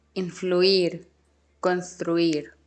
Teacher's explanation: the ui part is not a diphthong. It's to be pronounced as 2 separate monophthongs.